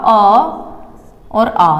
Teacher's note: कंठ से जिनका उच्चारण होगा अ और आ, यानी कि छोटा अ और बड़ा आ दोनों